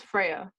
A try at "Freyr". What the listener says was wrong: Freyr. There's an R at the end.